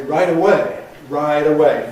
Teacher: So, although we say right in American English, as we do in British English, in American you say right away, voicing it before the vowel of away